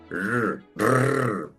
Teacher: es como si dijera la r pero sin golpear la lengua